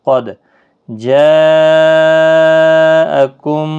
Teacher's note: یہاں پر مد متصل ہے، اس کو 4 الف کی مقدار کے برابر کھینچنا ہے۔ دیکھو بڑی مد ہے۔